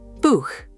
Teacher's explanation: hard ch, from the throat.